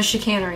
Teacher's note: The beginning ch sound is sh, as in Chicago. Oh. So it's sh-canary.